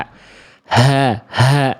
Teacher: Dia dilafalkan dari bagian tenggorokan paling bawah atau tenggorokan paling dalam atau pangkal tenggorokan. Ya, memiliki sifat dengan mengalir nafas yang karakternya biasa atau berat. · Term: H besar